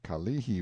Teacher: pronounced stress on the second syllable